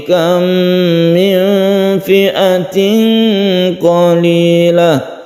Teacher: Kam min fi'atin qalilah, kam min ini sukun, mem bertemu dengan mem idgham mimi juga, kemudian nun bertemu dengan fa, ini ikhfa hakiki yang jumlah hurufnya ada 15 dibaca samar. Ini juga tanwin bertemu dengan qaf, ini dibaca samar